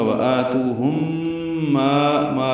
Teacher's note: ہم میں میم ساکن کے بعد میم آنے کی وجہ سے ادغام شفوی ہے، غنہ ہوگا